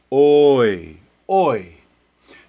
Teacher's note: It doesn't last as long because it's the more reduced, the lesser element of the diphthong. The second half tends to be shorter. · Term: choice diphthong